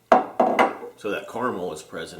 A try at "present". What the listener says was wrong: You said president. President.